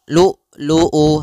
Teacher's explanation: kalau syiddah adalah tertahannya suara. Maka lu'u harus tertahan. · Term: sifat syiddahnya